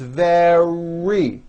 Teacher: the r occurs in the middle of the word it's not a d sound